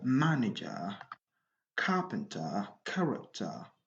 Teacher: Donc, la règle numéro 5 nous dit que quand vous avez un mot en anglais qui se termine par ER, donc l'accent tonique est sur la première syllabe. The stress is on the first syllable